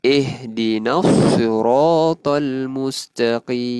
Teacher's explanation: Huruf ha kita tahu huruf ha adalah tempat makhrajnya adalah di bahagian kerongkong dan dia di awal. So kita sebutnya memang kita sebut huruf ha tu dada kita akan rasa getar.